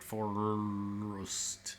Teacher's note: You go from r to st and like don't bother with the schwa in the middle.